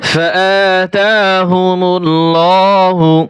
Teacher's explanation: এখানে আল্লাহ লাম মোটা হবে, লাম খারা জবর ল।